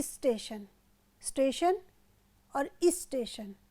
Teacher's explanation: स्टेशन के आरंभ में इ का आगम कब होता है जब हम स्टेशन को ई लगाकर उच्चारित करते हैं